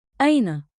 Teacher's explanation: Keep it rising at the end, curious, friendly.